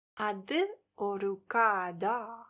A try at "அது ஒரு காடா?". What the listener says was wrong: Not kada. There's no tongue between the teeth. It's kada, not kada. அது ஒரு காடா?